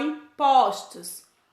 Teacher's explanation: esses sons vocálicos ficarão abertos